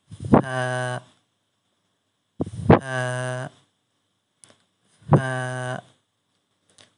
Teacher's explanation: ১৪ নম্বর মাখরাজ, নিচের ঠোঁটের পেট সামনের উপরের ২ দাঁতের আগার সঙ্গে লাগাইয়া